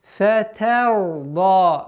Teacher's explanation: Нужно договорить та с огласовкой фатха, а потом переходить на твердость звука ра. Фатарда. При остановке удлинение аннулируется и остается у нас в размере двух огласовок.